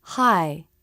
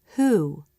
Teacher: the H sound happens without changing what the lips do for the next sound